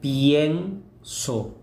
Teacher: son dos vocales formando una sola sílaba, ¿no? Una única sílaba. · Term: diptongos